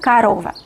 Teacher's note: Otras O nosotros pronunciamos con menor fuerza, menor calidad y menor cantidad. Entonces O ya no es O, sino pronunciamos A. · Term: rasgo de reducción